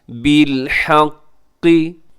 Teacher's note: وَأَنزَلَ مَعَهُمُ الْكِتَابَ بِالْحَقِّ، قاف کے اوپر تشدید ہے، قاف موٹا بھی رکھیے گا اور تشدید کی وجہ سے ذرا اپنے مضبوطی سے بھی اس کو ادا کرنا ہے۔